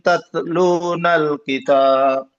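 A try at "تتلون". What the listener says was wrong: Masih ada mantulnya. Tatlu hanya udara, hanya udara. Tatlu.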